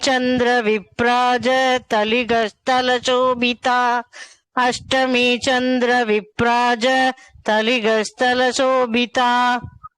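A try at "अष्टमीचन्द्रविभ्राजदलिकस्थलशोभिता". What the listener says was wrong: ஃபுல்லா சொல்லணும், நடுவுல பிரேக் எடுக்க கூடாது. அஷ்டமே சந்திர விப்ராஜ தளிகஸ்தல சோபிதா முகச்சந்திர கலங்காப மிருகநாபிவிசேஷகா.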